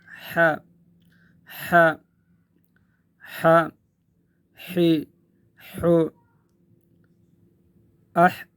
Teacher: یہ حرف ح یہ حرف ادا ہوتا ہے گلا کے درمیان سے، گلے کے درمیان سے، حلق کے درمیان سے، حلق کے درمیان سے، گلے کے درمیان سے جب ہم اس کو ادا کریں گے تو ایک ہوا کی سی آواز آئے گی۔